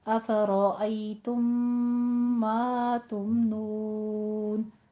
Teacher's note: अफ़रअय्तुम मा तुमनून, तुम मा में इदगाम शफ़ी हो रहा है, मीम साकिन का कायदा, इसको होंठों को मिला लीजिए, 2 काउंट करने हैं